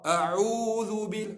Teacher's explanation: Huruf ain, huruf tawassut. Huruf yang mana yang dia tak keras, dia tak lembut, dia di fi wasatil halq, tengah-tengah halaq.